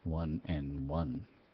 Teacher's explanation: Sometimes in English, in quick speaking, the D is dropped.